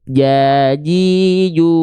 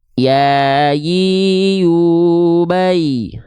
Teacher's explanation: kalau huruf Jim dia tengah lidahnya menyentuh ke langit-langit di atasnya ya menyentuh langit-langit di atasnya sedangkan huruf ya tidak menyentuh Tengah lidahnya ke langit-langit hanya mengarah saja ke langit-langit di atasnya oke ya Yi yuai